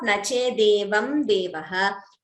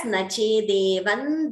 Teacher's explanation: the Anuswara gets replaced by the Anunasika of that Varga